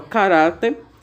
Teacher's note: ela é paroxítona porque a palavra tônica tá no ra ou seja na penúltima sílaba e nesse caso ela termina em R E nós vimos aqui